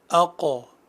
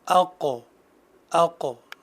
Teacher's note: حرف قاف ہے جو کہ زبان کی جڑ اور اس کے مقابل کے نرم تالو سے ادا ہوتا ہے۔ اگر ہم غور کریں تو ہماری آواز وہیں ٹھہر رہی ہے، اقو۔